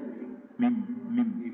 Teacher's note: Izhar Safawi terang yang kebibiran. Mim. Mim tu huruf bibir kan?